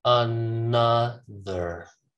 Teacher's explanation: I start with a schwa, I finish with a schwa.